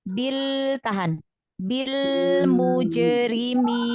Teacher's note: makhrajnya nempel di huruf lam dengan nunnya, tapi lembut aja.